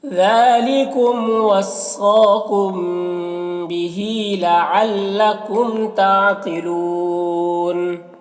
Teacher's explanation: ताक़िलून में कौफ को पुर पढ़ेंगे, हुरूफ़ मुस्तअलिया में से है